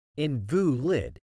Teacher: When used as an adjective, it is typically pronounced as invalid, with the stress on the second syllable.